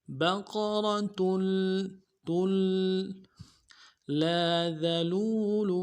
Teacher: انہا بقرۃ، با کو نرم سے ادا کریں گے، قاف کو موٹا کرنا ہے، را کو موٹا کریں گے، تا کی تنوین کو لام کے ساتھ ملانا ہے، لام کے اوپر تشدید زور دیں گے